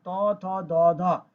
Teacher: এরপরে সে ত, থ, দ, ধ, এটা হচ্ছে দাঁতে স্পর্শ করে, উচ্চারণ করার সময় এটা দাঁতে স্পর্শ হয়